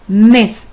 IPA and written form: miθ (myth)